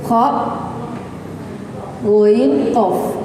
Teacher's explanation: Pangkal lidahnya naik tapi ujung lidahnya turun. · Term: isti'la tapi infitah